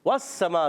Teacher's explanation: वस्समा वाव की अदायगी होगी होंठों की गोलाई से। वस्समा सीन बारीक है, सीटी के साथ अदा होगा